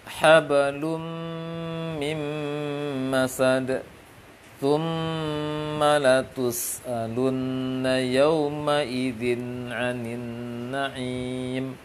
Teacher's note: Mimik bibir sama. Tidak monyong, tidak juga terlalu lebar dia ke kasrah, dan juga tidak ke fathah dia. Dia ke aslinya mim. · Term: dengung